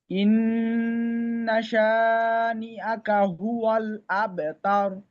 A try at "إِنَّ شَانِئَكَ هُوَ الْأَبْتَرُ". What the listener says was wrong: ইন্নাতে একটু গুণা মনে হয় কম হয়েছে।